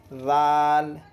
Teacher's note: سرا زبان اوپر کے دونوں دانتوں کے سرے سے مل کر ذال ادا ہوتا ہے۔ ذال کی شکلیں بھی دیکھ لیں، یعنی دونوں دانتوں کا سرا اور زبان کا بھی سرا، یعنی زبان تھوڑی سی باہر آئے گی دونوں دانتوں سے۔